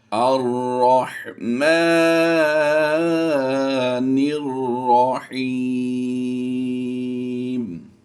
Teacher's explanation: اب ہم الف کے بعد لام کو نہیں ملائیں گے بلکہ را مشدد جو ہے اسے ملا کر پڑھیں گے۔